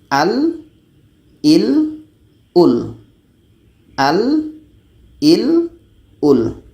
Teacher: la ini kebiasaannya memang akan dibaca secara jahar. Tidak ada angin di sini.